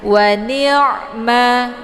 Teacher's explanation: Ini ain sukun. Jadi sifatnya tawasud. Makna tawasud itu pertengahan. Jadi antar ditekan dan ditahan. Jadi dialirkan setengah saja